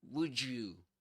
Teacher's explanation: The thing is that when we combine the d with the y in the word you, we get ju. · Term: connected speech